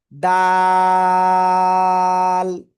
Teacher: জিহ্বার আগা, সামনের উপরে দুই দাঁতের গোড়ার সাথে লাগাবো, লাগিয়ে আমরা তিন আলিফটা নিয়ে উচ্চারণ করব।